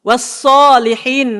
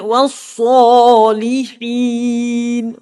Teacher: huruf sod memang tebal, tapi tak perlu muncung bila baris atas. Jangan وَالصَّالِحِينَ.